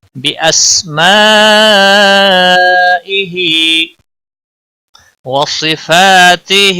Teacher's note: ہا کے نیچے کھڑی زیر ہے، ایک الف کے برابر کھینچ کر پڑھیں گے۔ بِأَسْمَائِهِ وَصِفَاتِهِ، صاد حروف مستعلیہ میں سے ہے، پور پڑھا جائے گا۔